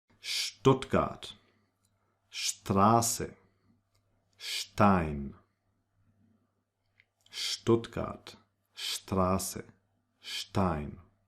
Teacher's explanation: the ST combination is pronounced like if there was a little H in between. It's like actually st, Stuttgart, Straße, Stein, Stuttgart, Straße, Stein.